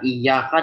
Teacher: kalau ya bertasydid jangan sampai mencampurkan dengan jim